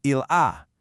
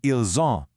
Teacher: The singular il a sounds like il a, but the plural ils ont sounds like ils ont. That buzzing z sound is literally your only clue. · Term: liaison